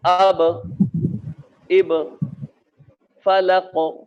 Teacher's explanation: انہیں قلقلہ اس لیے کہا جاتا ہے کہ ان کی آواز پلٹتی ہے، یا پھر آپ آسانی کے ساتھ یوں سمجھیے کہ ان کی آواز میں ایکو ہوتا ہے، آواز ریورس ہوتی ہے.